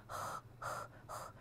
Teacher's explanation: 然后接着我们看到的是一个声门擦音或者叫喉擦音，它是一个清音，并且它没有对应的浊音。 因为你声门这个地方，如果说你要发这样一个气流让它往外走，同时声带要振动的话，人很难，就是从生理上来说很难做到这样一个动作，所以说它没有对应的浊音，它就是呵呵呵这样一个音